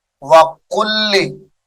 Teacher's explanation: وَقُلِّ قاف لام پیش قل، لام زیر لی، وَقُلِّ لام ساکن کو چھوڑ دیں گے، لام مشدد کو پڑھیں گے، قاف کو اس کے ساتھ ملایا جائے گا۔